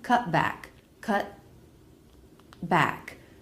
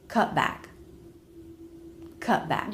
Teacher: you don't release the T you don't hear a T sound what you hear is an abrupt stop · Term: stop T